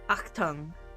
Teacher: like a guttural sound in the back of the throat, like an ach.